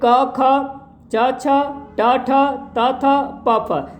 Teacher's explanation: अघोष ध्वनियाँ हैं, यानी इनको बोलने में स्वर तंत्रियों में कंपन नहीं होता है